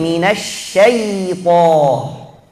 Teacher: Kita harus baca dengan mengalir, suaranya jalan, karena huruf ya itu termasuk huruf lin dan huruf rakhawah, suaranya harus jalan.